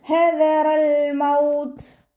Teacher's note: ത സുക്കൂന് നമ്മളവിടെ വഖഫ് ചെയ്യുമ്പോൾ കുറച്ച് എയർ പാസ് ചെയ്യണ സൗണ്ട് കൊടുത്തിട്ട് ഉച്ചരിക്കുക